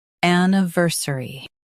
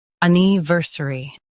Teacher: In US, stress ver. In UK, stress niv.